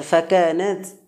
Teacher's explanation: তাটা হামসের হরফ একেবারে হরফটা দুর্বল এই জন্য বাতাস নির্গত হবে